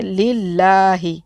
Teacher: لفظ اللہ کے لام کے نیچے زیر ہے، اس لیے اس کو باریک پڑھیں گے، للہ، دو دفعہ پڑھنا تشدید کو، للہ، کھڑے زبر کو ہم کھینچنا ہے، کیونکہ جیسے میری انگلی کھل رہی ہے اتنی مقدار میں ایک الف کے بعد ہمیں کھینچنا ہے، للہ، للہ، الحمد للہ، الحمد للہ۔